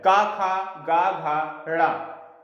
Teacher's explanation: जो का वर्ग के जितने भी वर्ण आते हैं वो कंठ से बोले जाते हैं